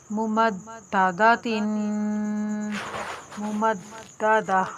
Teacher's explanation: ता के ऊपर हरकत तनवीन होने की वजह से गुन्ना होगा